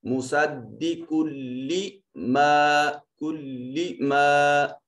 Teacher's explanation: यहाँ इदगाम ऐसा होगा कि आवाज नाक में नहीं जाएगी। मुसद्दिकुल्ली मा, कुल्ली मा, अब देखिए आवाज नाक में नहीं जा रहा।